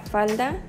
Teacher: sentirás como la lengua se posa en la parte trasera de los dientes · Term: lateral